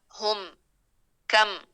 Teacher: میم ساکن کے بعد کاف اظہار شفوی بغیر غنہ کے